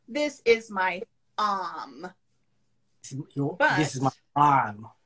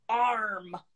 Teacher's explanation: British people do not like R. They do not like R. They will drop that R. So for example, in British English, this is my arm.